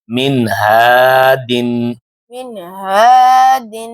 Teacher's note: میم زیر نون ساکن میم زیر نون ساکن من من ہا زبر الف ہا زبر الف ہا ہا دال دو زیر دال دو زیر دن دن ہا دن ہا دن اب پیچھے سے پڑھیں گے اس کو یعنی اس پر رکیں گے نہیں، نون ساکن پر اس کی آواز کو ظاہر کر کے پڑھیں گے، غنہ نہیں کریں گے، رک گئے تو غنہ میں چلے جائیں گے. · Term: اظہار حلقی